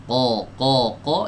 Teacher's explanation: Bagian lidah yang paling dalam ya. Ini nempel ke langit-langit yang lunak ya. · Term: aqsal lisan